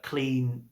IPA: kliːnt